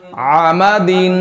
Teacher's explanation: आइन का मखरज जानकर फिर आइन को अदा कीजिए, वरना आइन और हमजा इनकी आवाज एक जैसी हो जाती है। आइन का मखरज गला और गले का दरमियान वाला हिस्सा